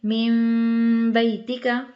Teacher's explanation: ہونٹ تھوڑے سے کھلے چھوڑنے ہیں، ناک میں آواز بھی جائے گی